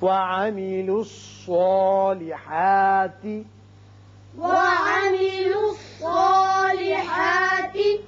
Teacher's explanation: صاد چونکہ حروف مستعلیہ میں سے ہے لہذا یہ پر پڑا جائے گا، اس کی وجہ سے جو اس کے اوپر کھڑا زبر قائم مقام الف کے ہے وہ بھی پر ہوگا۔